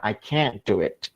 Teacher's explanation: I can do it, berarti bisa. Tapi penekanan pada auxiliary-nya, pada modusnya, artinya tidak bisa. I can't do it.